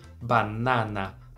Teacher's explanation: A gente lê essa palavra em português com o A mais fechado, banana, né?